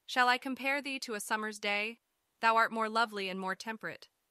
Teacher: rhythmic pattern used in poetry that consists of five Iams or two syllables where the first is unstressed and the second is stressed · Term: iambic pentameter